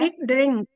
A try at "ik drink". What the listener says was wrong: Drink, dikanya dibunyikan.